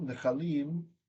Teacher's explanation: And then because we move the accent when we add something, like, excuse me, when we move the im there, we add the im, the pre-tonic kamatz became a schwa.